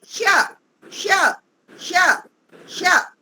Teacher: जीभ को तालु से लगाकर श। जीभ का बीच का हिस्सा उठाएंगे और तालु से टच करेंगे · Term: तालव्य श